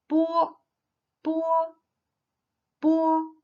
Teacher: lip closure with no vibrations of the vocal cords. It sounds like bo in boy.